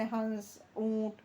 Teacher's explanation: नाक और मुंह दोनों से बोले जाते हैं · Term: अनुनासिक